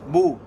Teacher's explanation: When I say the letter ba, you can imagine as soon as I start saying it, the ba is pronounced wholly. I don't ramp up into the sound of ba. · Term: shidda